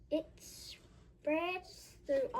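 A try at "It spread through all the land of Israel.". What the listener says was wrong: There's no S on spread.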